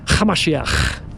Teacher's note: You have to add a little bit of a throaty little ch. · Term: ch sound